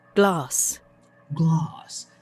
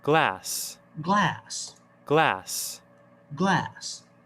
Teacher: It's with the ah sound, like the word father.